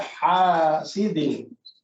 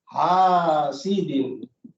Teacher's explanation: मैं आपको फर्क बताता हूँ, यानी असल लफ्ज़ ये क्या है, हासिदिन, हसद करने वाला, हासिदिन। ये हा जो है ये है दरमियानी हलक से निकलता है।